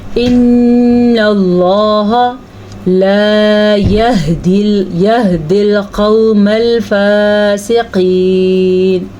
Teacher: ان اللہ نون کے اوپر شد آنے کی وجہ سے غنہ کریں گے اور اللہ کے نام کو پر پڑھیں گے. لفظ اللہ کو پر پڑھیں گے.